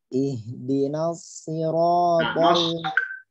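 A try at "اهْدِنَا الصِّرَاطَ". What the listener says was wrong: Jangan nas. Ya, nanya tipis. Ya, jangan nos.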